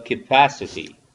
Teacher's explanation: it's ka and schwa at the first syllable